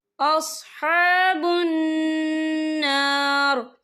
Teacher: یہاں نون مشدد ہے تو یہاں پر غنہ ہوگا